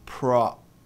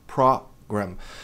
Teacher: Veja que tem um a depois do O para indicar que não é apenas um o, mas tem um leve a no final.